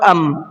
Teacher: ہمیں یہاں نون کو نہیں پڑھنا بلکہ میم کو پڑھنا ہے